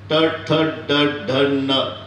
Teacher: ट नेहमी जीभ वरच्या टाळूला लागत असते म्हणून तालव्य